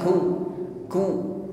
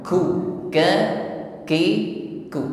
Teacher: Ada ada tercampur dengan nafas yang mengalir ya namun sedikit karena huruf kafnya berharakat ku ke ki ku tetap ada hamasnya